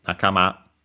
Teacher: accent on the last syllable